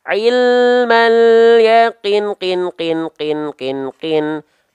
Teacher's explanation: Seperti kadar panjang melafalkan kin sebanyak 6 kali. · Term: 6 harokat